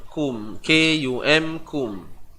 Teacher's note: Jadi jelaskan huruf mim yang datang daripada bibir. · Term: Izhar syafawi